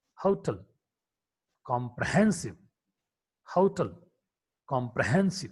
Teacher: Her is a voiceless glottal fricative consonant.